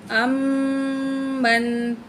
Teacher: میم کے اوپر تشدید ہے، غنہ کر کے پڑھیں گے